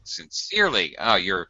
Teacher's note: syllable stress sincerely should be second syllable